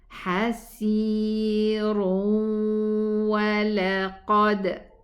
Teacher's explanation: If I connect it, it's going to be idgham, but also the ra is going to be elevated.